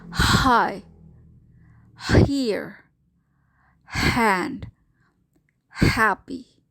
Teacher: this sound carries no voice you should be able to feel that the sound comes from the very back of your mouth in fact it is articulated by the glotus which is as